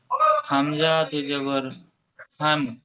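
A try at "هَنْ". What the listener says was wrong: হামজা টান হয়ে যাচ্ছে, হামজা।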